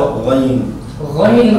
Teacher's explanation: गैन खाका मखरज अदनाए हलक यानी हलक का मुंह की तरफ वाला हिस्सा